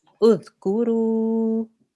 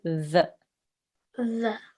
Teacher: So your tongue has to touch your front top teeth. Say the. The. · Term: Dhal